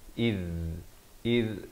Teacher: Zal di hujung lidah makhrajnya, hamzah baris kasrah bertemu zal. · kha di hujung kerongkong